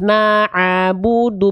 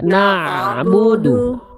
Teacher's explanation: Mad thi'i baru jadi Ain fat Ain fathah naabudu bukan naabudu na'budu enggak ada vokal a lagi setelah Ain